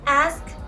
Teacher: In the word ask, when pronounced singly, we can hear the final velar stop.